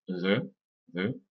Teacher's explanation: la voyelle c'est une voyelle qui se situe au centre de la bouche